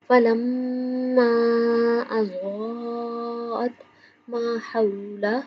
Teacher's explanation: فلما میم شدت پہ غنہ کریں گے